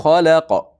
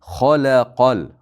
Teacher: Xalaqal, xo yo'g'on, la ingichka, qo.